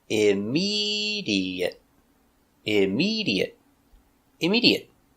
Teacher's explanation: four syllables stress on the second syllable